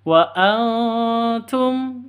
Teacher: cara bacanya ee samar disertai dengung siap-siap ke huruf tanya karena ini ikhfa Hakiki Wa Antum seperti itu bukan Wa Antum